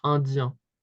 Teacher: one, we would pronounce the same way as australien. Okay, so we don't hear the N, it's indien.